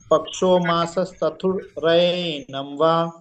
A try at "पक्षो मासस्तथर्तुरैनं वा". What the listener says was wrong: तथर तू। तथर तू। रेफ इधर आ जाती था के बाद। तथर तू रैनं वा।